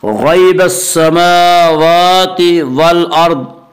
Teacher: والارض کے را کو پر پڑھیں گے